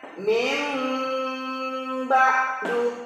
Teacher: membalik menjadi mim serta berdengung biasa di al-qur'an kita lihat itu ada mim kecil di sini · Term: iklab